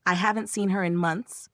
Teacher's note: Pitch goes down at the end since it's a statement. You'll stress I, seen, months.